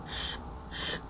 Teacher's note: voiceless lingual palatal fricative